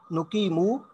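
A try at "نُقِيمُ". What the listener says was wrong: नुकीम। अच्छा, ये आखिर में वाव वाला साउंड ना है, इससे सिंगल पेज नुकीमु।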